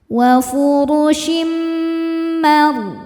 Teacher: Ra sukun dibaca secara tafkhim karena sebelumnya berharokat fathah. Cara bacanya ditebalkan. · Kemudian ada idgham bi gunnah karena ada tanwin kasrah menghadapi huruf mim. Cara bacanya tanwin dileburkan ke mim disertai bunyi dengung.